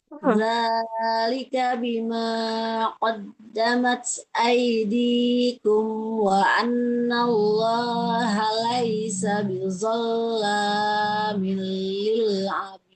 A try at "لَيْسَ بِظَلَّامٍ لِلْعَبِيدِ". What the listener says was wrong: Laisa bizzo, huruf nya lebih tebal lagi. Laisa bizzalamil lil abid.